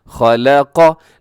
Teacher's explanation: लाम को बारीक रखना है, खा और कौफ को मोटा रखना है, और बहुत एहतियात के साथ कि इसको पढ़ते वक्त कहीं लाम भी मोटा ना हो जाए।